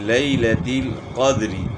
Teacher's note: دال میں قلقلہ ہوگا، قاف کو موٹا کرنا ہے، اور وقف میں را ساکن ہو جائے گی